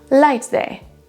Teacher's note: On n'entend quasiment pas le T du premier mot